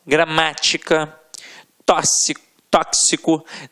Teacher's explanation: a sílaba tônica sempre na antepenúltima sílaba. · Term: proparoxítonas